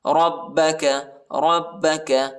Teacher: را کو با کے ساتھ ملائیں گے، با کو شدت کے ساتھ سختی کے ساتھ پڑھنا ہے